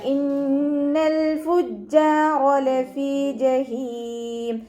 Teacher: ലാമ് കൽക്കലയുടെ ലെറ്ററിലാത്തത് കൊണ്ട് ഹാഫ് സുക്കൂന് കൊടുക്കാൻ ശ്രദ്ധിക്കുക. ജീമിന് ശ്രദ്ധ വന്നു 2 ഹർഫുകൾ ഉച്ചരിക്കുന്ന കനം കൊടുക്കുക. ജീമിൻ്റെ കൂടെ അലിഫ് മദ്ദും വന്നിട്ടുണ്ട്, 2 കൗണ്ട് നീട്ടിക്കൊടുക്കുക കേട്ടോ.